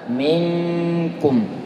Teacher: nun sukun berjumpa dengan kaf, itu ikhfa, ya, ikhfa ditahan, kemudian juga dibuka karena setelahnya huruf kaf. Walaupun setelahnya ada baris dhammah, minkum, ya, mingnya dibuka, jangan sampai minkum gitu saja.